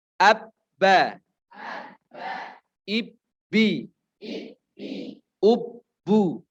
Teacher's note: Ab, ib, ub. Ketika bertasydid maka ditahan dulu baru mantul. · Seolah-olah kita membaca di sini 3 huruf ya. Jadi huruf ba-nya dibaca double.